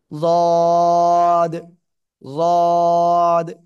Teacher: জিহ্বার গোড়ার কিনারা উপরে মাড়ির দাঁতের গোড়ার সাথে লাগিয়ে 3 আলিফ টানিয়া উচ্চারণ করতে হবে। জদ, জদ। খেয়াল রাখবেন জিহ্বার আগা যেন এই 2 দাঁতের আগায় না লাগে কিংবা গোড়ায় না লাগে।